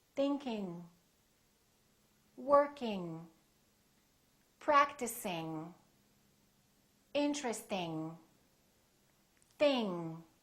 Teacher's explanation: don't release your tongue and don't just produce the n in the front it's a sound in the back